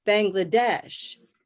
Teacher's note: So bang is definitely going to have a little minor stress.